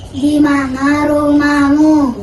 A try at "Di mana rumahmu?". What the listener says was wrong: Iya, betul, tapi intonasinya tidak seperti itu. Kalau kalimat tanya, nadanya itu juga harus bertanya. Di mana rumahmu? Bukan seperti itu, tapi di mana rumahmu?